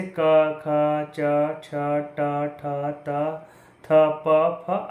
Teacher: अघोष वह ध्वनियाँ होती हैं जिनमें स्वर रज्जु में कंपन नहीं होता है